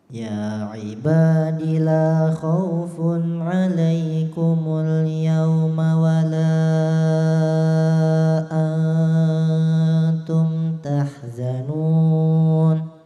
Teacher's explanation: Nun itu mad arid li sukun ya, jangan diberhentikan di tengah-tengah, dituntaskan.